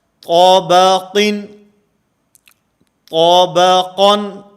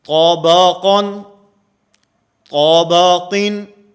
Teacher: اب اس میں قا بھی موٹا ہے، آخر میں قاف بھی موٹا ہے، اور درمیان میں با جو ہے یہ باریک ہے